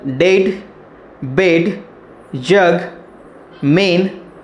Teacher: we can hear a vibration or hum sound in the pronunciation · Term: voiced sounds